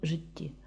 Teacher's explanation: цьому слові буква ж означає звук ж він приголосний дзвінкий твердий буква и передає звук и з наближенням до е Він голосний ненаголошений буква Т передає звук ч приголосний глухий м'який і подовжений і · дві однакові літери Т передають подовжений звук · перший склад у нас жи ненаголошений відкритий другий склад ті наголошений відкритий